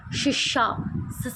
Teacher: ਹੈਗੇ ਪਰ ਇੱਕ ਦੂਜੇ ਦੇ ਇੰਨੇ ਨੇੜੇ ਆ ਜਾਂਦੇ ਨੇ ਕਿ ਬਾਹਰ ਨੂੰ ਜਾਂਦਾ ਸਾਹ ਜਿਹੜਾ ਰਗੜ ਕੇ ਬਾਹਰ ਨਿਕਲਦਾ ਹ ਜਿਵੇਂ ਤੁਸੀਂ ਬੋਲ ਕੇ ਦੇਖੋ ਸਸ਼ਾ ਸ ਹਨਾ ਵੀ ਆਪਾਂ ਨੂੰ · ਨੇ? ਸੰਘਰਸ਼ੀ ਵਿਅੰਜਨ ਉਹ ਵਿਅੰਜਨ ਹੁੰਦੇ ਨੇ ਜਿਨ੍ਾਂ ਦੇ ਉਚਾਰਨ ਸਮੇਂ ਦੋ ਉਚਾਰਨ ਅੰਗ ਆਪਸ ਨੂੰ ਛੂੰਦੇ ਨਹੀਂ ਹੈਗੇ ਪਰ ਇੱਕ ਦੂਜੇ ਦੇ ਇੰਨੇ ਨੇੜੇ ਆ ਜਾਂਦੇ ਨੇ ਕਿ ਬਾਹਰ ਨੂੰ ਜਾਂਦਾ ਸਾਹ ਜਿਹੜਾ ਰਗੜ ਕੇ ਬਾਹਰ ਨਿਕਲਦਾ ਹ